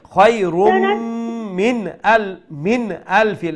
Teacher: So we will do a idgham with gunna. Then min, that nun sakin, we're going to pronounce with izhar, meaning clear, no nasal sound.